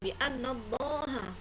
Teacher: tasdid ditahan dua harakat ada yang tiga harakat boleh bianallaha ini lafzul jalalah tafkhim Iya karena biannallaha agak berat bacanya